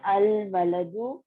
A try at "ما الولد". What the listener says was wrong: دیکھیے آپ سسٹر میں آپ کو میں روز ایک دفعہ بتاتی ہوں کہ جب ملا کے پڑھنا ہو الف لام آتا ہے تو پھر ما الولد نہیں پڑھیں گے, کیا پڑھیں گے؟ مل ولد. روز آپ ایک دفعہ یہ غلطی کرتی ہیں, ٹھیک ہے, اور میں اس کا کریکشن بھی کرتی ہوں.